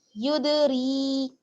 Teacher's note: را کو باریک پڑھنا ہے زیر کی وجہ سے